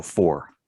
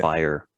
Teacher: it sounds like two syllables even though it's only one vowel because to get to the letter R we need to go through a different mouth posture